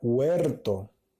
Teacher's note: la primera sílaba, es la que lleva mayor fuerza de voz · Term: sílaba tónica